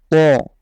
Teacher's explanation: খেয়াল রাখবেন যেন এই তটা পড়ার সময় আপনার মুখটা গোল হয়ে আসে তথা মোটা হয়ে আসে, পুরোপুরি যেন বাংলা ত না হয়, ত।